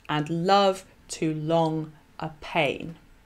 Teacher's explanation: it's the second syllable in each metrical foot that is highlighted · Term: iambic